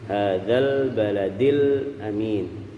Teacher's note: Lam sukun di sini jangan kita pantulkan, kita tempelkan di makhraj lam.